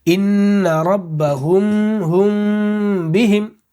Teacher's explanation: فوراً بند نہیں کریں گے ہونٹ کو، تھوڑا سا پہلے ناک میں آواز کو چھپائیں گے، اس کے بعد پھر فوراً ہم کیا ہے؟ ہونٹ کو بند کریں گے۔ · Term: اخفاء شفوی